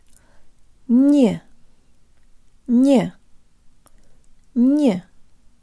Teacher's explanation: Draw slightly forward, tip of the tongue behind the bottom teeth, lips rounded and protruded.